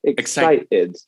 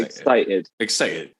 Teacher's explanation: We can either go for a regular T in excited with a T, or we can get rid of the T completely and put in a little break. And there's a glottal stop of excited.